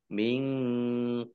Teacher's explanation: minqblihim nun sukun bertemu dengan huruf q bacaan ikhfa dibaca samar-samar ba sukun bacaan qolqolah atau ee memantul ditampakkan pantulannya